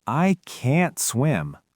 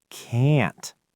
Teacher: I didn't even pop the t at the end, but you know it's negative because the vowel was stretched and stressed.